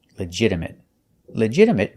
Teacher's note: And a stop T at the end.